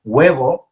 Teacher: it's more of a g it's a light g sound and it's coming kind of from the very back of your throat